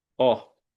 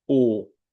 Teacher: O mais importante em termos de pronúncia é a diferença do E longo para o E breve, do O longo para o O breve. O O breve é aberto, O. O O longo é fechado, O e mais longo